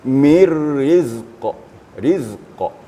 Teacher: Kalau kita berhenti pada mir rizq, maka qaf itu menjadi qalqalah kubra. Qalqalah besar.